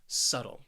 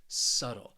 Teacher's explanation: this word has two syllables and the stress is on that first syllable